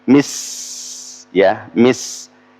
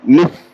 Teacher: kalau sin itu di belakang gigi, mis, ya, mis. Kalau tha di bawah, ya, mit